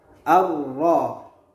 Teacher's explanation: Ro merupakan salah satu huruf daripada idgham syamsiyah atau alif lam syamsiyah, sehingga alif lam yang ada pada ar-ra dihilangkan bunyinya atau tidak dibaca